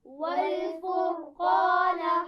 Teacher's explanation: را بھی موٹی پڑھی جائے گی اور قاف بھی. دیکھیے اس میں را ساکن ہے اور میں نے بتایا تھا اس سے پہلے زبر یا پیش ہو تو کیا کریں گے، موٹا پڑھیں گے.